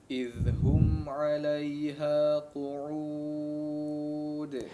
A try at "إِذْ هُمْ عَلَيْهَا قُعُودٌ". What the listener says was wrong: Baik, perjelas huruf qafnya ya, diperhatikan di situ huruf qaf ya, bukan kaf. إذ هم عليها قعود.